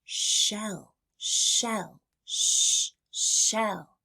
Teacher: you round your lips, pull back your tongue, and let the air slide through with your voice off. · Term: sh sound